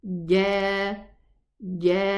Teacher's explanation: I pronounce ja from the very front part of the tongue, while the jim is from the middle part of the tongue against the upper palate. Ja, جاءنا. 4 counts here.